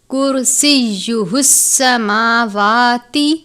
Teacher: را ساکن ہے، را کو پر پڑھتے ہیں، یہ باریک والا کاف ہے، ایک کاف جسے ہم کہتے ہیں موٹے والا کاف، وہ حروف مستعلیہ میں سے بھی ہے، حروف اخفا میں سے بھی ہے، یہ باریک کاف ہے۔